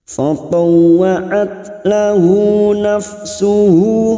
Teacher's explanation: tak sukun yang memiliki sifat siddah dan hamas maka harus terasa at.